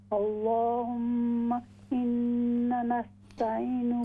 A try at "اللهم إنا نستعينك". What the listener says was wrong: ہاں جی، یہ إنا لمبا ہوگا.